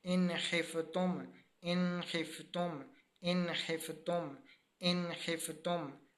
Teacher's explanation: ہم نے اظہار کیا، ظاہر کر کے پڑھا، اس کے اوپر ہم نے غنہ نہیں کیا